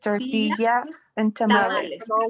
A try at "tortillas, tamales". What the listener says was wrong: Where is your tongue? In the upper. Behind your teeth. Behind your teeth. I want you to put your tongue a little bit to the back, like in the center, and say the same.